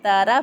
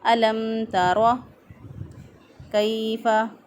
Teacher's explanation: را کے اوپر زبر ہے، را کو پر پڑھیں گے، موٹا پڑھیں گے ، اگر باریک پڑھ دیا تارا پڑھ دیا تو غلط ہو